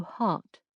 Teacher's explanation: The English omit the R sound in places where most Americans pronounce it. So heart sounds closer to heart.